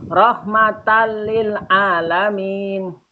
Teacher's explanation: termasuk bacaan idgham bila gunnah. Alasannya ada fathah tanwin ketemu dengan huruf lam. Cara membacanya masuk tanpa dengung.